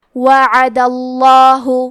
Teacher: وَكُلًّا وَعَدَ، کلمت وعدہ میں حرف الدال پہ زبر ہے لہذا لفظ الجلالہ کے لام کا حکم ہے تفخیم تو ہم حرف اللام کو موٹی آواز میں پڑھیں گے